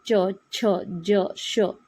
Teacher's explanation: तालव्या वर्णात च छ ज झ त्र य श यांना य लावून उच्चार होतो